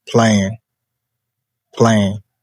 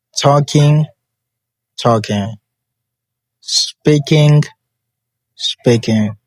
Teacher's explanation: G left unpronounced in ing.